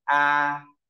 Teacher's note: thanh một được vẽ mũi tên từ 5 sang 5 tức là họ yêu cầu ta đọc từ cao nhất sang cao nhất nên khi đọc mình nhớ đọc cao và ngang ta đưa một ngòn tay và đưa ngang này ta đọc